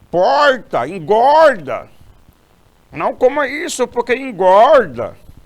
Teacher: você tem aquela questão do r retroflexo